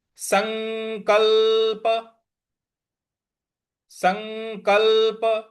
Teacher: जो आधा ल है उस पे भी हमें हल्का सा बल लगाना है